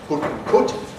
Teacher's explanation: You can get people from Newcastle on Tyne who say [pʊt] <put> and [kʊt] <cut> with really [ʊ]-like quality